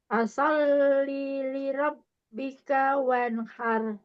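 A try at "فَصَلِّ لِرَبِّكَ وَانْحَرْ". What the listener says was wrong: Lagi, linya masih panjangan.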